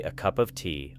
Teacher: the words a and of usually become very light, while cup and tea carry more energy